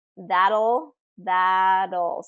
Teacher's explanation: so that T becomes a D